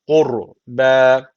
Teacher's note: o zaman ra kalın okunuyor